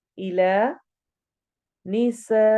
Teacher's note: सीन को हमने सिटी की आवाज के साथ पढ़ना है।